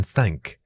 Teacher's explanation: To create the unvoiced thank, gently place your tongue between your teeth and blow air over it like a careful whisper.